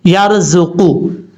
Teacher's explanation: را ساکن سے پہلے زبر ہو تو را پر پڑھا جاتا ہے